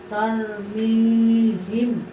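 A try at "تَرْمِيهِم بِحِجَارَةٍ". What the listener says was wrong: ঠিক আছে, কিন্তু গুণনা তো আদায় হলো না। এখানে মিম সাকিনের পর হরফটা হচ্ছে বা, অতএব এখানে গুণনা হবে।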